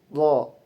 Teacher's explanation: Huruf d makhraj termasuk asnani latwi. Dalam tariqatul khurujnya dalam keluarnya udara itu termasuk infijari. Infijari adalah adanya letupan. Kemudian ada majhur. · Adanya ee tidak bergetarnya pita suara ketika diucapkan. Kemudian huruf dod juga termasuk mufakham yaitu huruf yang tebal.